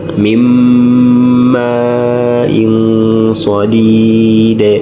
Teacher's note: So wetugenda kuddako tulina eya miimu watandika nuuni saakina tugamba ويسقى من ماء صديد olira nti nuuni eyingira mu miimu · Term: idghaamu